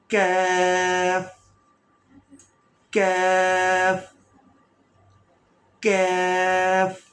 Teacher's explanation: تو زبان کی جڑ اوپر والے سخت تالو سے لگے گی